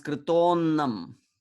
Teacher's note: the short a and visarga change to o, and that o makes the next a of annam disappear. And this is represented by the avagraha in the Devanagari. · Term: sandhi